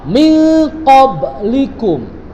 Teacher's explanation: Ikhfa ab'ad itu yaitu penyamarannya jauh. Penyamaran pelafalan nun mati dan tanwinnya itu jauh.